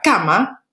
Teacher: La palabra cama tiene su segunda sílaba contando desde atrás más fuerte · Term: graves